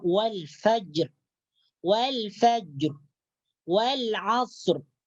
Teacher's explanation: Jadi ketika kita membaca huruf ra yang terdapat dalam ayat wal fajr, wal asr, maka ra sukunnya atau ra matinya dibaca tebal.